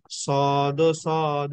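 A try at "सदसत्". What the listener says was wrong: আমরা হসন্ত যুক্ত করে এভাবে সদ সদ কেন বলবো? সাদা সৎ, হসন্তের উচ্চারণটা কি?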